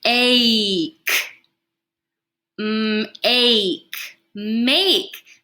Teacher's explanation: Now that A, instead of saying ah, is going to say its name, the long vowel sound. Now it will say A.